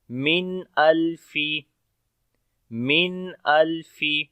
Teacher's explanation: نون ساکن کے بعد حمزہ آ گیا تو یہاں پر اظہار ہوگا، نون کا ظاہر پڑھ کر، نون کی آواز کو ظاہر کر کے پڑھیں گے. من الفی، من الفی، تو تھوڑا سا جو میم ایسے ہلکا سا لمبا ہوتا ہے تو یہ آواز ہلکی سی جاری ہوتی ہے جو کہ توسط کی ہوتی ہے.